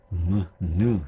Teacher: 무와 느는 비음, 콧소리라고 했죠. 그쵸? 느 하면 코가 울리잖아요.